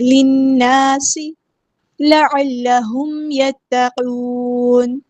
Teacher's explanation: قاف ہمارا ہیبیٹیٹ ہے، پورا ادا کریں گے. نون کو ہم ساکن کر دیں گے وقف کرتے ہوئے، اور مد عارض بھی ہوگی